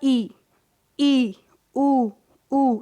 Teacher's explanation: आप खुद बोल के देखेंगे तो आपका मुंह बहुत ही कम खुलेगा, वो क्या होता है, संव्रत होता है।